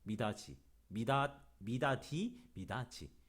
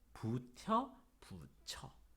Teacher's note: 디귿은 지읒으로 센 입천장 소리로 티귿은 치읒으로